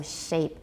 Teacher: We have some labialization, we definitely have labialization, but it's not rounding like with oo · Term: sh consonants